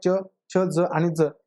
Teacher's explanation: उच्चारण के बाद वाला भाग संघर्षी हो जाता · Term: स्पर्शी संघर्षी